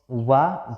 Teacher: तो इसमें वा जो आपका वर्ड है यही सिर्फ और सिर्फ आपका दंत ओष्ठ है। दंती और ओष्ठ दोनों का इसमें मिलन होता है, दोनों के मेल से उच्चारित होता है होष्ठ और दंती के। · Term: दंतोष्ठ